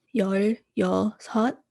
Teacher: when you say it very quickly it carries over there's not really a space in between the two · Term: carry over